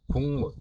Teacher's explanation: 기역이 이응으로 바뀌었습니다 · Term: 교체